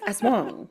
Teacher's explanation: Aswang with the emphasis on the second syllable